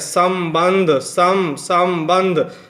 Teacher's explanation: स के बाद से आधा जो म आ रहा है ना, उसकी जो आवाज़ निकलती है वो नासिका से निकलती है